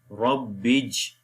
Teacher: Ra we connect with the ba, Rab, Ra is in heavy sound, Rab, and ba connect with the Jim, Bij, Rab, Bij. And there is a kalkala which is called weak kalkala. The kalkala letter is coming in the word, Rab, Bij.